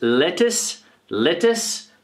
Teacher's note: lettuce, with the stress at the beginning. If you see this symbol here, it means the stress is at the beginning of the word.